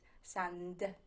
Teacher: the n and the d are both alveolar which means you make them with your tongue against your teeth